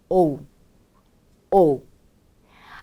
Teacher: 오에 또 역시 좀 더 크게 강세를 넣어주신다는 느낌으로 오에 힘을 주시고 자연스럽게 우까지 소리를 연결해 주세요